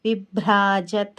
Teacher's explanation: విభ్రాజత్ అంటే బా కింద రావత్తు, ఇది మహాప్రాణాక్షరం. భా ఉంది కదా, అంటే గాలి బయటకి వదులుతూ చెప్పాలి,